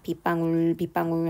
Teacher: 빗방울 빗방울 하면서 코 속이 막 울리는 것 같은 느낌, 뭔가 흘러가는 소리 느낌이 있어요. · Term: 울림소리